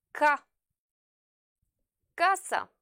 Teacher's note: L'arrière de la langue se rétracte pour prononcer un son plus guttural qu'en français. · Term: son vélarisé